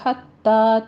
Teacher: حتی میں ہا وسط حلق سے ادا کریں گے